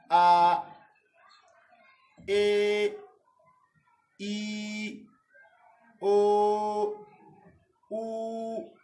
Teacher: waɗannan wasula ba 'yan hanci ba ne, ma'ana yayin furta su iska kwata-kwata ba ta fitowa daga hanci